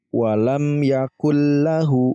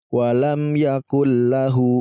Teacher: Kita gabungkan tapi tidak perlu didengungkan jadi walam yakulllah jadi Nun matinya ini malah kita hilangkan langsung